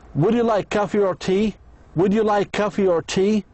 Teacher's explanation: In yes no question the answer is yes or no. The speaker's voice goes up two times. Two times. Would you like coffee or tea?